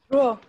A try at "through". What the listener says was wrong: No, it's not throw, it's through, okay? When we have R, it's through. This word is though. We read it O, though, without R, but this one is through.